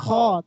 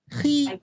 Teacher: Kho dia berat, khi lebih ringan.